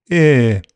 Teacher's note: Ear is a long vowel sound made with the tongue near front, the jaw near close, and the lips unrounded. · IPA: [ɪː]